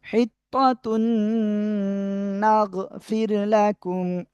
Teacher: তানবিনের পরে ঈদগামে বাগুন্নার অক্ষর নুন গুন্নার সাথে মিলিয়ে পড়তে হবে।